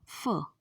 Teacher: In the production of sound f, soft palate is raised to shut off the nasal passage and obstruction is caused by lower lip and upper teeth। आप लोग diagram में देख ही सकते हैं कि फ को बोलते समय lower lip and upper teeth touch करते हैं एक दूसरे को, इसलिए ये लेबियोडेंटल साउंड है।